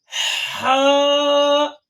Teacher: حلق کے بیچ والے حصے سے ادا ہوتا ہے